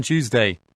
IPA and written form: ˈtuːz.deɪ (Tuesday)